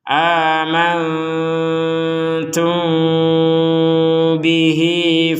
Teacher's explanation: jelas Tum seperti itu Nah ketika kita menggabungkan dengan ba ya mim sukun gabungkan dengan ba di kata bihi ini barulah kita membacanya dengan samar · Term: mim sukun bertemu ba